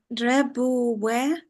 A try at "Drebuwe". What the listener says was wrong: Good, nice, perfect. That was very difficult.